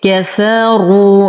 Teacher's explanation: نفخم الراء بعدها واو ساكنة فالمد طبيعي حركتين